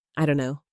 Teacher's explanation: For instance, I don't know becomes I don't know. The t sound just disappears. This happens a lot in casual conversation. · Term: dropped sounds